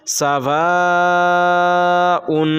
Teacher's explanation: یہاں مد متصل ہے، یہاں کھینچ کر تھوڑا پڑھیں گے